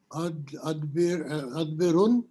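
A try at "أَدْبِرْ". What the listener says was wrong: نہیں, اس میں سکون ہے نا اینڈ پہ, تو الامر منہ ادبر.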